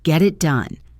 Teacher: the T sound becomes a soft D or a flap T sound common in American English. It sounds like get it.